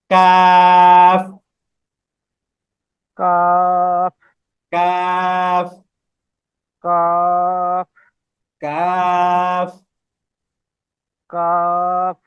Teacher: যাবে না আবার জিহ্বার গোড়াতেও থাকবে না বরং জিহ্বার গোড়া এবং জিহ্বার গোড়া এবং জিহ্বার মাঝখানের যে মধ্যবর্তী স্থান ওইখানেই থাকবে